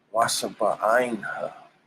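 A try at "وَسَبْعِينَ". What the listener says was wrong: there's no nah. Sounds like you say Wabasha'ina. There's no nah. But it still sounds like you're saying Wabasha'ina. That's what it sounded like you were saying.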